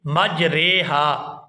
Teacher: یہاں را کو مجریہا نہیں پڑھیں گے، یہاں پر اس را کو زیر کی طرف جھکائیں گے لیکن آدھا جھکائیں گے، یہاں پوری زیر جو ہے وہ نہیں پڑھی جائے گی۔ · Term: امالہ